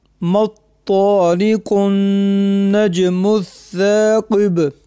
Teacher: وقف کی حالت میں با قلقلہ بھی ہوگا